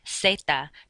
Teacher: the letter Z does not make a buzzing sound like it does in English. You just pronounce it like an S.